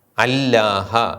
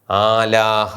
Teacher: ആ എന്ന ഹൃസ്വ സ്വരത്തിന് ശേഷം വരുന്ന ലോമത് അല്ലാ എന്ന് ഇരട്ടിക്കേണ്ടതിന് പകരം ദീർഘിച്ച് ആലിഫ് ആണ് ദീർഘിക്കുന്നത്